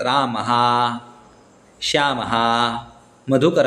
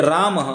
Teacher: आता हा शब्द आहे तर रामः या शब्दाचा उच्चारण करत असताना दक्षिण भारतीय लोक याचा उच्चारण करताना राम हा असं करतात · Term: विसर्ग